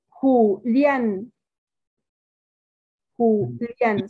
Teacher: el acento lo lleva en la A.